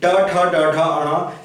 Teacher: सबका उच्चारण स्थान मूर्धा से होता है, इसलिए इन्हें मूर्धन्य व्यंजन भी कहते हैं।